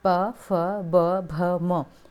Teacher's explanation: देखिए बोल के दोनों होठ आपस में चिपक जाएंगे · दोनों होंठ आपस में चिपक जाएंगे इनको बोलेंगे तो। प फ ब भ म, ये सब क्या है, ओष्ठ वर्ण है।